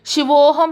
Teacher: సో ఈ శివః plus అహం ఏమైంది శివోహం అయింది రాసేటప్పుడు ఓకారం పెట్టాము శివోహం పలికి చూడండి పలికేటప్పుడు కొంచెం ఉకారం దొర్లుతుందన్నమాట అందులో కాబట్టి ప్రొనౌన్సియేషన్ లో ఉకారం అనేది వస్తుంది.